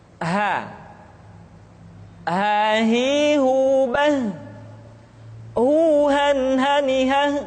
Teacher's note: huruf ha dikeluarkan dari tenggorokan yang terjauh, sama seperti kita mengucapkan huruf a.